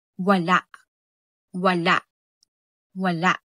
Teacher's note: ang W na ang likod ng dila ay umaangat at ang labi ay bilog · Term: malapinig